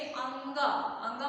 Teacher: अनुस्वार का मतलब होता है इसका उच्चारण नाक के द्वारा होता है। जैसे अंगा, अंगा बोलने पर नाक से हवा निकल रही है, अगर नाक को हम ऐसे बंद करके अंगा बोलेंगे तो नहीं बोल पाएंगे।